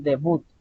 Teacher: Si ustedes pronuncian bien la palabra debut, al final lleva su acentuación